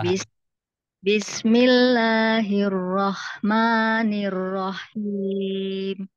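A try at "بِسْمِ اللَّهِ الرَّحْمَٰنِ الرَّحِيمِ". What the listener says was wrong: Cuman h-nya jadi tebal, roh, roh. Nah, jadi gitu. Jadi dia h-nya harus tipis.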